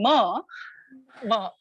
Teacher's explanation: you need the air to flow through your nose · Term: nasal